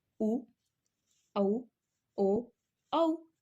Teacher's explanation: जिन स्वरों के उच्चारण में होंठ वृत्तमुखी या गोलाकार होते हैं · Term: वृत्तमुखी स्वर